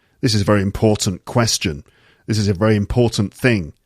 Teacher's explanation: Sometimes the T at the end disappears, as you can hear.